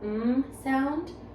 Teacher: nasal voiced with our lips together we have the m sound